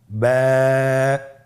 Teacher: এর মাখরাজ হলো আপনের দুই ঠোটের ভিজা অংশ থেকে আপনি উচ্চারণ করবেন